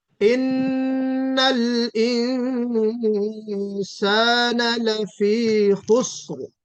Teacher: इख्फा बारीक होगा यहाँ पे, क्योंकि सीन हरफ इस्तिफाल है जो हरफ इख्फा के बाद आ रहा है, यानी नून साकिन के बाद जो हरफ इख्फा सीन है वो हरफ इस्तिफाल है।